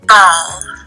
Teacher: pulses are visible during the onset of the plosive B when ball is stated. Vibration begins right away, and so voicing starts. Ball. For P in pan, vibration begins at a later time, and the pulses represent this, as there is a gap before the voicing begins.